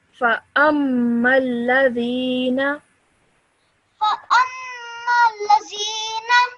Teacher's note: So the meme has a shadda, the lam has a shadda, so whenever you join one to the other, make sure you do them with a bit of force